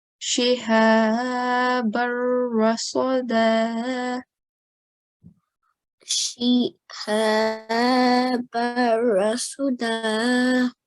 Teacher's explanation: And the last example, shihabar rasada. Okay, so if we are pausing, we will prolong it for 2 seconds